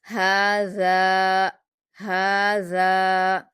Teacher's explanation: زال کے مخرج کو نرمی سے ادا کرنا ہے. اوپر کے 2 دانتوں کے کنارے سے آپ کی زبان کی نوک لگے گی اور آپ کی زبان کی نوک تھوڑی باہر آ جائے گی